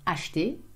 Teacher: again we have the E in the middle that we eat up